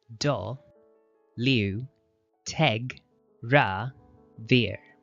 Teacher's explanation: Notice the emphasis is on the third and fifth syllable.